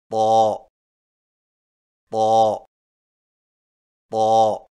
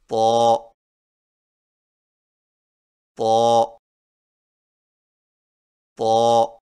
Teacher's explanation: طا کی ادائیگی میں زبان کی نوک کو سامنے والے اوپر کے دو دانتوں کی جڑ سے لگا کر اور زبان کے پچھلے حصے کو تالو کی طرف بلند کرتے ہوئے موٹی آواز میں پڑھیں